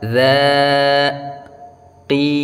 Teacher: kalau ki itu kasrah bertemu Ya Sukun panjangnya dua harakat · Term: Mad thaobi'i